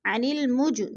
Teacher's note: عن المج، جیم پر قلقلہ ہے، جیم ساکن ہے تو ادھر قلقلہ کریں گے، اس کو تھوڑا سا ہلا کر پڑھیں گے